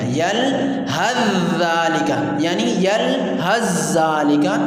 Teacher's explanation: ہے اور زال مدغم فی ہے، تو اس کو ہم جب سا کا زال میں ادغام کر دیں گے تو سا ختم ہو جائے گی